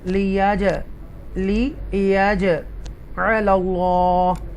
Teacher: अल्लाह के नाम से पहले ज़बर है, इसलिए हम उसको तफ़कीम के साथ पढ़ेंगे